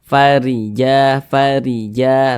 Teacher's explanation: ke bawah ini namanya tanda baca kasrah atau harakat kasrah huruf ro memiliki tanda baca kasrah maka dibaca tarqik Dibaca tipis sehingga pangkalisan kita itu tidak naik terangkat ke atas huruf rnya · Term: tarkik